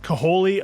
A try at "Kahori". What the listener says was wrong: There's no L. It's Kahori.